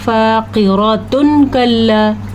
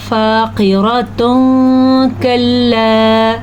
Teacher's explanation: فاقرۃ کلا، تو یہ ہم نے اخفاء نہیں ادا کیا، ہم نے تجوید کے ساتھ قرآن کو صحیح پڑھا نہیں ہے، تو اخفاء ہوگا فاقرۃ کلا، ہم نے نون ساکن کی، ہم نے تنوین کی آواز کو چھپا کے پڑھا ہے، اسی کو اخفاء کہتے ہیں، اور یہ ضروری ہوتا ہے تلفظ قرآن مجید کو صحیح طور پہ پڑھنے کے لیے سیکھنا ضروری ہے۔